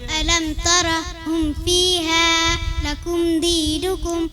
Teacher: मीम साकिन के बाद बा और मीम के अलावा कोई और हर्फ आए तो मीम साकिन को जाहिर करके बगैर गुन्ना के जल्दी पढ़ेंगे, उसको इजहार शफी कहते हैं।